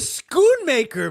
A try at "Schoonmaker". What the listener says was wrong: Shoemaker, but I got you. The C is silent. Like Schultz.